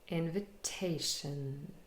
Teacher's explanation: And the secondary stress is on the first syllable, invitation. So te is the longest and loudest, but in is also a little bit longer and louder compared to vi and shun.